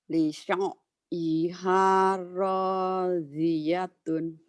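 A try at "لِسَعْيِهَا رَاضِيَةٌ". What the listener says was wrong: jangan Lisa, jadi sinnya biasa aja. Lisa, Lisa, nekannya di ainnya, jangan di Lisa, sinnya jangan. Si Lisa biasa, Lisa. Setelah ngomong sa, baru neken.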